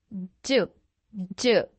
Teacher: D sound in English is a voiced, gentle sound